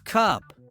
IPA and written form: kʌp (cup)